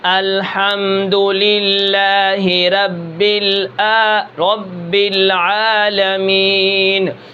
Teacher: را کو میں نے موٹا کرنا تھا لیکن میں نے باریک پڑھا ہے